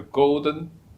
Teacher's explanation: the high pitched part is the first tone in Mandarin. Golden, that go is the first tone in Mandarin.